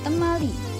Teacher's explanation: Bunyi letupan darsoveral atau K yang berposisi di awal atau di tengah kata dilafalkan dengan bunyi lamino alveolar atau T. Tetapi jika bunyi tersebut terletak di akhir kata dilafalkan dengan K, seperti ucapan T di awal kata temali yang artinya kemari, di mana kata kata K terdengar seperti kata T.